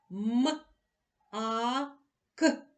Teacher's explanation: під час вимовляння звука м губи стиснулись